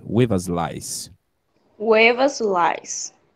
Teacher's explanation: Parece que esse TH vira um V.